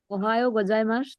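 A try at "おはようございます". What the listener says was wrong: I desu ne. Very good.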